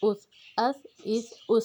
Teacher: اوپر اور نیچے کی دونوں دانتوں کے درمیان میں زبان کی نوک کو لائیں گے تو نرمی سے ادا ہوگا بغیر سیٹی کے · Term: نرمی والا حروف